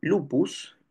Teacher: el segmento el sonido eso que uno puede decir en lupus esa p esa p representa un sonido oclusivo bilabial sordo